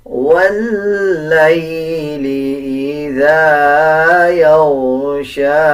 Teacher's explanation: لام اور یا کو ملا کے پڑھیں گے. واللیل اذا غائن کو پر یعنی موٹا پڑھا جائے گا، شین کو 1 سیکنڈ لمبا کر کے پڑھا جائے گا